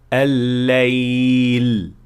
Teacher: जुबान के सामने के किनारे को सही जगह पर दबाया जाए ताकि हवा को जुबान के दोनों अतराफ से निकलने का मौका मिले।